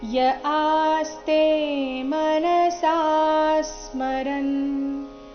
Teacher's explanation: ಮನಸ ನಲ್ಲಿ ಸ ದೀರ್ಘ ಬಂದು ನಂತರ ಅದರ ಮೇಲೆ ಸೌಮ್ಯ ಆಘಾತ